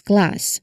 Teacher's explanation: The K sound is made at the back of your throat, and as you release it, your tongue needs to swiftly move forward for the L sound. So this requires coordination between the back of your tongue and the front. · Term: cul cluster